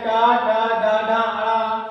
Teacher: मूर्धन तालु और दांत के बीच के पार्ट को हम बोलते हैं मूर्धन वर्ण